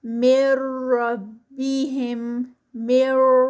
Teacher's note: اور یہ جو را کے ساتھ جب ہوگا تو بہت اس کو ٹھہریں گے نہیں، یعنی غنہ نہیں ہوگا بلکہ یہ ادغام وداؤٹ غنہ ہوگا۔